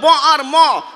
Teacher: ব আর ম দুটোই দুই ঠোঁট থেকে উচ্চারণ হয়